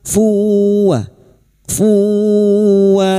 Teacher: masuk pada huruf wau dan mendengung selama tiga harakat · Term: idgam bighunah